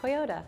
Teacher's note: in the middle of a word we typically if we're speaking actually soften it into more of a D sound